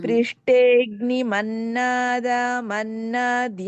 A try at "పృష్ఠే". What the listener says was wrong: ఇక్కడ పృష్ఠే మహాప్రాణం